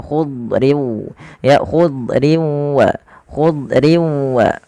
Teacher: Idbaq itu lidah kita lebih melekat-lekat ke atas langit sehingga dia menebal suara huruf dnya · yaitu pangkal lidah terangkat dan dia menebal